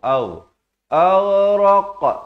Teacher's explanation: Ghain di hujung kerongkong. Aghraq. Ini dah ada lantunan. Qaf di pangkal lidah.